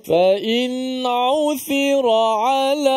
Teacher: Nun tu kena dizahirkan, diizharkan, dijelaskan mati nun tu tanpa boleh kita panjangkan gunnah. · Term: izhar halqi